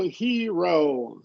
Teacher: the trick here is to split up the e from the r. Put the r in the next syllable.